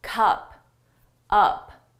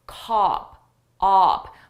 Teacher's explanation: my mouth opens wider for cop